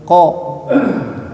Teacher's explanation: Qaf dari pangkal lidah. Jadi ujung lidah yang bagian dalam.